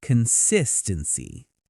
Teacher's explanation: The stress is on the 2nd syllable.